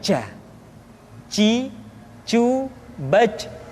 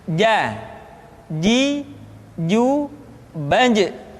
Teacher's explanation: Padahal kalau kita melihat sifat yang dimiliki huruf ja, dia tidak boleh mengalir nafas karena sifatnya al-jahr, lawan dari al-hamas